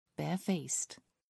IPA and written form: ˈbɛəˌfeɪst (barefaced)